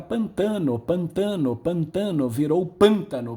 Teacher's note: A sílaba tônica apenas recuou do tam para o pan. Era uma palavra paroxítona, se transformou em proparoxítona. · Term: sístole